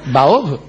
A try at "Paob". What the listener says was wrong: Paob. El tiracohetes es con P, como sabe cualquiera.